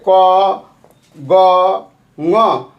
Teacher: अल्प प्राण में क्या होता है कि इसके उच्चारण में फेफड़े से बाहर निकलने वाले वायु, हवा की मात्रा कम होती है। जो अल्प प्राण है उसमें फेफड़ा से जो आवाज़ मतलब हवा निकलता है वो हवा मतलब कम निकलता है, और इसका उच्चारण हो जाता है जैसे क ग ङ।